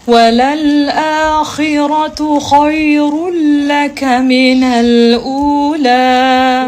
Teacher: Harfu kha apabila dalam keadaan kasrah dia tetap tebal ya kecuali kita merendahkan kita punya rahang kerana kha itu bertanda kasrah kan. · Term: ketebalan kha